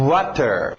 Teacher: Não é um vogal, que existe também esse som de é um vogal, ok? Esse é um semivogal, saindo dos lábios para fora. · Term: W semivogal